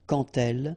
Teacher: when you will have this D, you will phonetically pronounce it like T. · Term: liaison